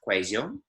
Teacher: So in many parts of the Spanish-speaking word, a double L is a y noise. Here in Medellin, they make a bit of a z kind of noise